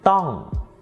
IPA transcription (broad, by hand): dtɔ̂ng